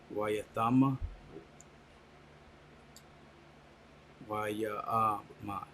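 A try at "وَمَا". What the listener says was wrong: Now it sounds like you're skipping some characters. Try to smooth that out.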